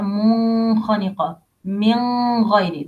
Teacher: do not hide the nun with letter الخاء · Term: clear nun